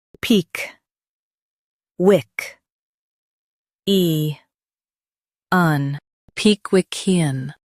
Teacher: Stress wick and keep ian soft.